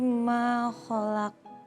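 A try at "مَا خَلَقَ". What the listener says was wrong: Bukan ho tapi kho. Saya hanya menekankan bukan ho tapi kho.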